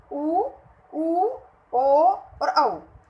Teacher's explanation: तो देखो, वृत्त प्लस मुखी, यानी जो हमारा मुख है वो वृत्त की आकृति यानी गोल आकृति का हो जाता है।